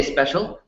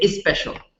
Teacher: they don't say special they say is special because they have to add a vowel in in the beginning it just that's that we have to